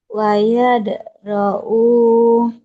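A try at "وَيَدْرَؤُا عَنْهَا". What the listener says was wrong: Nggak panjang itu. Wa yadra'u anhal. Nggak panjang.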